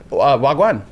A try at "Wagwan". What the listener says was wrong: Well, you gotta put the inflection on it.